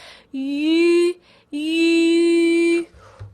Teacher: when I make the yu sound, my tongue is all the way at the front, like I'm making the e sound. I'm trying to squeeze the e sound out.